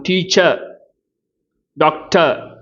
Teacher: இதை என்ன சொல்லுவாங்க, டீச்சர் டாக்டர் அப்படிம்பாங்க. அதாவது இந்த கடைசி ஆர் உச்சரிக்காத விதத்தில் இருக்கும். அப்போ அது மாதிரி ஆயிடக்கூடாது.